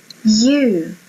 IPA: juː